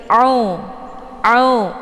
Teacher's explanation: Untuk bacaan ain ini letak posisinya di tenggorokan bagian tengah. Jadi ditekan sedikit, au, sehingga pangkal lidahnya menghempit di batang leher.